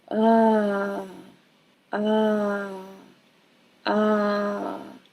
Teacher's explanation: And you hear how my voice is starting up high and going low. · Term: wavy sound